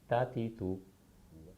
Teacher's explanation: ता का मखरज है ज़ुबान की नोक जब ऊपर के दांतों के जड़ वाले हिस्से से लगे ता अदा होता है। मखरज के एतबार से इसको नितइया कहते हैं।